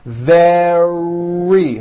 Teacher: make sure that the r sound is strong and your lips are coming forward your tongue is back and you push out the r